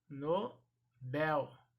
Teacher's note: Esta palavra ela é oxítona, portanto, a sílaba tônica será a última